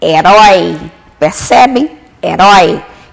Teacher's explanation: E agora o ditongo aberto. Timbre aberto.